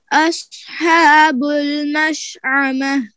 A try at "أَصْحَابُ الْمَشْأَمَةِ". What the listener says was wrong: ये साद में सिफ्ते इस्तेला भी है, इतबाक भी है, इसको पुर करना है।